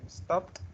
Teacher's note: Daniel. Si termina en P y se pronuncia al final como una T